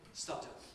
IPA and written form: ˈsʌdən (sudden)